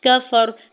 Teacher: کاف کے زبر کو فا کے زبر کو بغیر کھینچے ہوئے ادا کرنا ہے